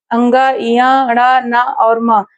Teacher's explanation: अङ ञ ण न और म इन पांचों का उच्चारण स्थान क्या होगा? नासिका होगा।